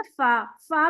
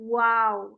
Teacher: ऊपर के दांत नीचे वाले होंठ पे लगते